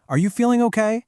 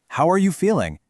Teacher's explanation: A yes or no question like, Are you feeling okay? goes up because you're looking for a simple confirmation. But a wh question like how are you feeling actually falls.